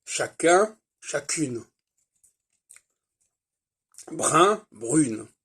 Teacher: Il est clair que le féminin fait disparaître le on, le en, le un.